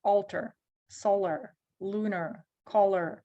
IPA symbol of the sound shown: ər